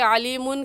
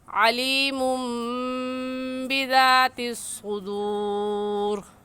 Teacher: تنوین کے بعد با آ جائے تو وہ دونوں میم بن جاتے ہیں اور ان پر غنہ بھی ہوتا ہے